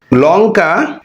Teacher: লঙ্কা শব্দের এই ল উচ্চারণ করতে গিয়ে সেটা দন্তমূল থেকে উচ্চারিত হচ্ছে।